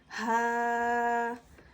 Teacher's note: اسے حلق کے نیچے والے حصے سے ادا کریں گے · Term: حرف حلقی